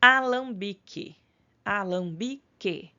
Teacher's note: E o bique, né? Vejam que o QU sai como um som só, não pronunciamos o U. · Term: dígrafo